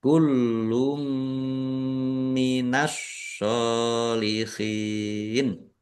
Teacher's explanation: Mendengung mim ditahan biar tampak mendengungnya.